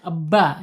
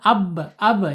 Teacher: Ba makhrajnya ada di asyafatain dua bibir terkatup